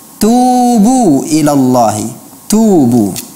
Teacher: huruf ta bukanlah huruf yang memiliki safir atau desis. Jadi dia tidak dibaca dengan tubu, tapi tubu ilallahi, tubu ya, satu.